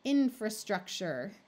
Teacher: this is another word where the in part is accented this is not accented so the a becomes the muffled schah